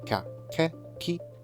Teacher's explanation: ka, ke, ki has the pattern low, high, high